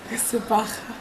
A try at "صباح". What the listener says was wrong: Don't spit. صباح. It's like you're fogging up a spoon. صباح. صباح.